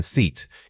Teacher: When you say the long vowel, like in seat, you need to stretch that sound out, keeping your lips spread into a wide smile. The key difference isn't just length, it's tension.